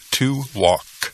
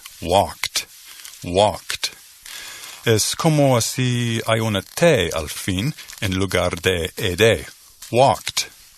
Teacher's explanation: you don't use your vocal cords to pronounce the termination in English